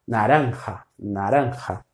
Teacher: E o J, esse som de um R aspirado.